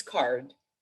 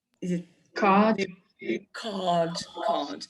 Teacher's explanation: Another position when you do not produce R in British, it's if it is followed by a consonant. So if followed by a consonant, you do not produce it.